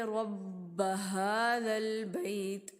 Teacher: یہاں پہ یا ساکن اور اس سے پہلے زبر ہے، اس لیے یہ حروف لین ہے اور اس کو جلدی سے ادا کریں گے. اور تا کا جو مخرج ہے وہ ہم واضح کریں گے.